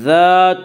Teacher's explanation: الف مدہ کو ایک الف کے برابر کھینچ کر پڑھیں گے